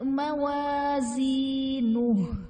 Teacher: زا میں سختی اور سٹی آئے گی، اس کو نرمی سے نہیں پڑھنا ہے